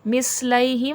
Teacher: سا نرمی سے پڑھا جائے گا، اس کو مثلیہم سختی سیٹھی کے ساتھ نہیں پڑھیں گے، تا نرمی والا حرف ہے.